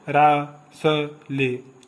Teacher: और र, स, ल, इन तीनों को बोलते हैं हम वर्ष, दंत प्लस मसूड़ा, अर्थात दांत और मसूड़ा दोनों के कॉम्बिनेशन से इन अक्षरों को बोला जाता है